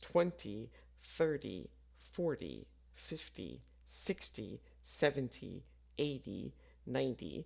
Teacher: When you say the numbers 20, 30, 40, 50, 60, 70, 80, 90, say the first syllable with more emphasis. Also, make the ty sound like dy.